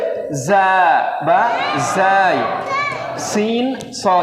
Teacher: একটু সিটির মতো আওয়াজ হবে